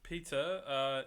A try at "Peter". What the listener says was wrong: I think you're saying that like Hook. Peter. Peter.